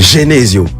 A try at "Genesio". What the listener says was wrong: Mais pourquoi tu fais tu fais le G là comme ça? Genesio.